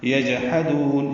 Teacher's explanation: جیم ساکن پہ قلقلہ ہے, ہا وسط حلق سے ادا کریں گے. دال کو لمبا کریں گے.